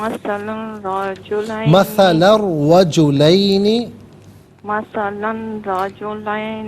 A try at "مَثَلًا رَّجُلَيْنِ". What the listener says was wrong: مثلاً نہیں ہے، اس کو لام کو تنوین کو را کے ساتھ ملانا ہے۔ مثلا الرجلین